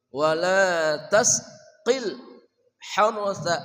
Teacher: ha dari tengah kerongkongan. Hartha, ra-nya tebal, enggak boleh harsa ya.